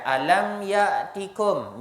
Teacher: izhar syafawi tidak ada dengung asalkan izhar tak dengung